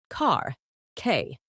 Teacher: British English dropped R sounds